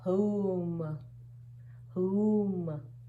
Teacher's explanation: Any alphabet followed by WH has that sound, but when WH is followed by O, it only produces the H sound